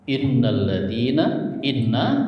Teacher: Suara yang keluar dari hidung ditahan tiga harakat ya. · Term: gunah